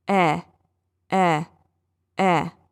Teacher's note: I'm almost smiling to create that sound. My lips are spreading wider horizontally as opposed to being relaxed and opened or forming a circular shape.